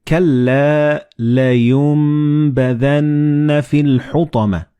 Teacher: And this meme appears in the middle of the word. So the noon and ba, when they follow one another in the same word, you don't pronounce noon or ba, but you pronounce meme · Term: assimilated